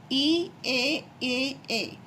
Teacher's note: ये यानी कि आगे के भाग से बोला जाता है जीभ के